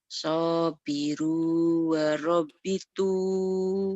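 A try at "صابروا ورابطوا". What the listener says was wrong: Rohnya panjang. Iya panjang.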